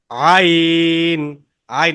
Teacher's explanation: আইনের মাখরাজ হচ্ছে কণ্ঠনালী বা হলকের মাঝখান থেকে আর তিন আলিফ টানতে হবে